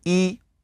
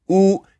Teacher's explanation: Notice that you pull back to say oo. So E's in the front, oo's in the back.